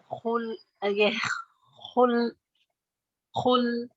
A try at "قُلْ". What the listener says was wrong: خل نہیں ہے, کو ہے, کو دیکھیے خل جو ہے نا اور بھی پیچھے ہے, زبان کو زیادہ پیچھے لے جائے تو خواہ بنتا ہے, مگر تھوڑا سا آگے رکھیں گی نا جہاں پہ کوا ہے. ٹھیک ہے, آپ نے قاف کو ٹھیک کرنا ہے.